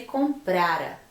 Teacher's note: Esse comprara não tem acento nenhum e a sílaba tônica é o pra